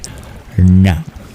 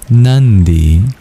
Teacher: pronounced further back in the mouth, where you curl your tongue back to reach it